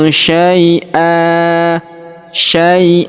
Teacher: Maka tanwin annya huruf an kita rubah menjadi fathah atau a ya kita hilangkan tanwinnya dan kita panjangkan dua harakat.